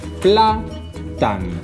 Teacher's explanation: S'accentua la penúltima síl·laba, no la última, sinó la penúltima.